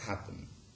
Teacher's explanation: the nasal undergoes assimilation to the same place of articulation as the preceding plosive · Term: syllabic nasal